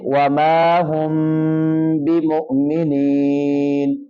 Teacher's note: میم ساکن ہو اور اس کے آگے با ہو تو وہاں پر بھی اپنی آواز میں غنہ پیدا کریں گے